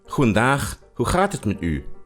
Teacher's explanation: the G in Dutch is pronounced ch, and Dutch has lots of chs.